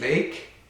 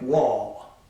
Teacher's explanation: in both cases the l sound has air flowing around the tongue it's it's least constricting of the types of consonants articulated with · If the L is at the end of the syllable, the tip of the tongue does not do that, so that would be like wall. But in both cases, the L sound has air flowing around the tongue.